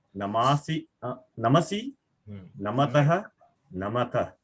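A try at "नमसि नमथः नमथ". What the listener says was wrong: Samyak.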